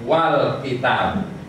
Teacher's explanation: Tadi di awal terbaca al kitabu, tetapi setelah dimasuki wawu menjadi wal kitabu. Hamzahnya hilang. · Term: hamzah wasol